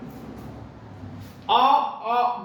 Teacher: आ बोलेंगे तो ये भी कंठ से ही आवाज निकलती है, इस नाते से कंठ में।